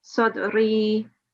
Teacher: these are the letters of mother so the letters of elongation we would still need to apply two seconds of elongation even in the pausing